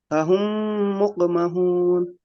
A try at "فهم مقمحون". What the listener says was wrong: ہا کو درست نکالیے. فہم مقمحون. ابھی ہم نے وقف نہیں پڑھا نا، آپ وقف مت کیجیے.